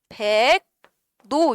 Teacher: 요게 백노 이렇게 갈 거고요. 리을이 어쨌든 간에 비음으로 바뀌었으니까 첫 번째 비음화가 일어났네